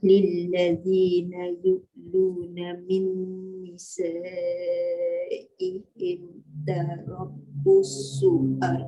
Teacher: Tarabbusu jangan busu macam ada sabdu pula kan. Dia tertambah huruf tu nanti.